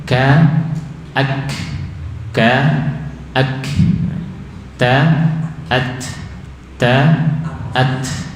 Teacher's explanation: Saat hidup hamsnya lebih sedikit dibanding saat sukun atau mati